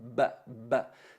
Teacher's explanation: porque el ba se articula con los labios cerrados, ba, ba. Si no hago ese impacto, si no pico la letra para que se perciba, no se va a notar.